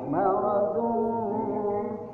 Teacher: Jadi apabila tanwin atau nun mati, ya, an, in, un bertemu dengan huruf fa, maka itu disebut dengan ikhfa. hukumnya ikhfa, harus disamarkan, jangan diizharkan, jangan dijelaskan